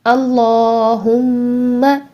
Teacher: سب سے پہلے دیکھیے اللہم، اللہ، یہاں پر کھڑی زبر ہے تو کھڑی زبر کو ہم 2 کاؤنٹس کے لیے یعنی 2 سیکنڈ کے لیے ہم اس کو لمبا کر کے لام کو پڑھیں گے